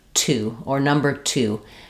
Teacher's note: the word to is going to have a burst of air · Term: aspirated T